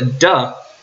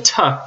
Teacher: the duh is a voice stop while the tuh is a voiceless alveolar stop.